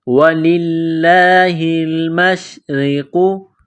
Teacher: لفظ اللہ کے نام سے پہلے زیر ہے تو لفظ اللہ کے نام کو باریک کرنا ہے